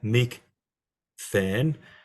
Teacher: It also has a first aorist form, mik than, and it's mik than because the gamma, when it's put next to a theta, is aspirated because the theta is aspirated, so the palatal consonant before it is also aspirated, so it goes from a gamma to a chi.